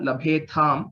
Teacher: in Madhyama Purusha, labhetham, both are Mahapranas